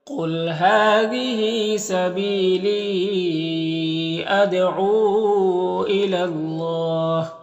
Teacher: اللہ کے لام سے پہلے لام کو پر زبر ہے تو اللہ کے لام کو پر پڑھیں گے. یا میں کوئی حرکت نہیں، اس کو نہیں پڑھنا.